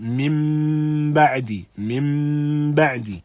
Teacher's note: We have gunna, and we have the letter, the noon turning into meme, and that is the meaning of this qalb, that we have a transformation, if you like, or turning of the noon to meme, min ba'di.